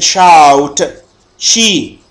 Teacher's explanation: produced with the tongue and the hard palate which is behind the alveolar ridge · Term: الأصوات الحنكية